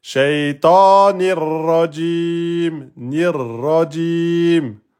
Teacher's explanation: Mais normalement, vous ne faites pas le r. Ok, normalement, on n'entend pas le doublement de ra là.